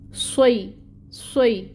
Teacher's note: सौद सीटी भी आएगी और पुर भी पढ़ेंगे, मोटा करके अदा करेंगे।